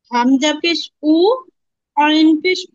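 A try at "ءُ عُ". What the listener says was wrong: একটু কষ্ট হচ্ছে আইনের উচ্চারণ করতে তারপর চেষ্টা করছেন আলহামদুলিল্লাহ আরেকটু চেষ্টা করতে হবে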